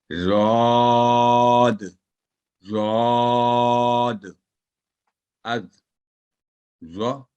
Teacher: زبان کے دائیں اور بائیں کناروں کو اوپر والی داڑھوں کے ساتھ لگانے سے ادا ہوتا ہے اور یہ حرف ہمیشہ بھاری آواز میں ادا ہوتا ہے